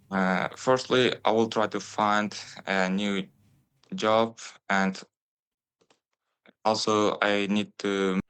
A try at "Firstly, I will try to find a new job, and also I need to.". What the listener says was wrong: You can probably hear the candidate's pronunciation is a little bit staccato. Duh, duh, duh, duh, duh, duh, duh, duh. There's not really a nice flow there. Pronunciation is clear, easy to understand, but we don't have advanced features of connected speech and intonation and sentence stress.